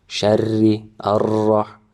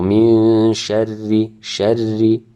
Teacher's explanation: we hide the bouncing of the ra. Arrah, arrah, instead of arrah, arrah.